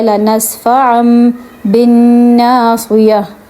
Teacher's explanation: یہاں پہ تنوین کے بعد با آ رہا ہے، اس لیے ہم نے تنوین کی آواز میں نون کو میم سے بدل دیا